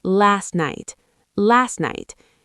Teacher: That T at the end of last blends into night. · You don't strongly release the T.